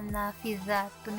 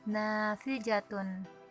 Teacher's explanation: yang seharusnya nafizatun itu menggunakan huruf za, tapi siswa tersebut menggunakan huruf jim, jadinya nafijatun